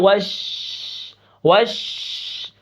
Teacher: شین کی آواز پورے منہ کے اندر پھیلتی ہے